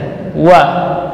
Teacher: huruf rakhawa dan jahar, keluar dari paduan dua bibir. Wa ini penting, ya.